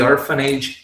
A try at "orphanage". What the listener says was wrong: Orphanage, not orphanage. you're saying orphan age. I know like age, but it's But orphanage, orphanage.